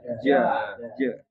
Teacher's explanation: tengah lidah nempel ke langit. Dia nempel ya, melekat ya. Itu tengah lidah kita ditempelin ke langit ja gitu ya. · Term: huruf jim